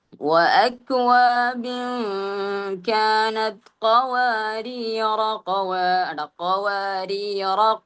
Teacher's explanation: ആ റായിനെ മദ് ചെയ്യുന്നില്ല, ദീർഘം കൊടുക്കുന്നില്ല. ആ റായിനെ എന്ത് ചെയ്യുന്നു, ഫത്ഹോട് കൂടി നീട്ടാതെ അടുത്ത ആയത്തിലേക്ക് കടക്കുന്നു.